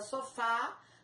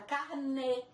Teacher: O acento grave será objeto de estudo posteriormente, mas as nossas regras de acentuação gráfica agora se referem ao acento agudo, que é o que aparece na palavra sofá, som aberto, e o acento circunflexo, que nós podemos ver na palavra carnê, que tem o som mais fechado.